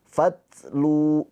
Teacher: Ingat tak sukun dia mempunyai sifat hams ya. Hams itu ada aliran nafas sedikit.